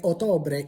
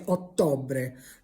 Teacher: So the word for October is not Octobre, it's Ottobre with a double T, but you have to pronounce the double T. It's not a sound that exists in English. It has a bit more depth to it.